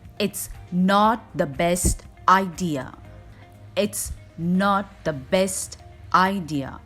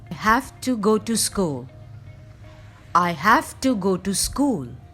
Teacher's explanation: I said the function words quicker and more relaxed than the important content.